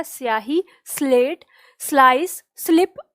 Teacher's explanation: स की ध्वनि स ही होती है, और इसमें कहीं भी हमें कोई ई की ध्वनि नहीं लानी होती, कोई आ की ध्वनि नहीं लानी होती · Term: दंत स